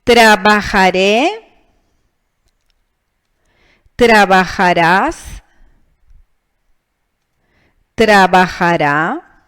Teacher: All persons except nosotros have a tilde, because they end in a vowel, in N and in S, and do not have the tonic syllable in the penultimate, but in the last syllable